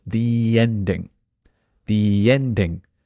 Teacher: the reason it's a long the is because ending starts with a vowel so it's the ending the ending and again it's changing right